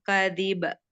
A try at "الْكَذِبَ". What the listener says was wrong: Kadzib. Kadzib. Tidak kadziba. Tidak. Kadzib.